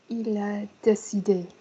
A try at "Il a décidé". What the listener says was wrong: Don't pause. Il a décidé. Il a décidé is better, but don't have any vocal pause. Don't have anything where the voice stops.